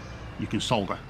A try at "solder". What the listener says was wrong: Solder. I'm not British. We do not pronounce the L.